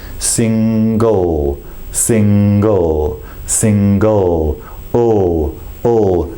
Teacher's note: the end of the word so to make this L sound bring in the back of the tongue up against the soft palate I say the word seam you'll notice that the tip of